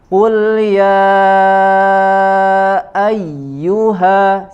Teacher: Qul ya ayyu, ya, kemudian setelahnya ada ya tasydid, ya. Huruf ya bertasydid, maka harus lebih dijelaskan, harus lebih terasa penekanan pada huruf ya-nya